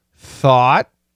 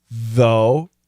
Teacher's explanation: Thought. That's an aspirated TH. Thought. Though is actually vibrated TH.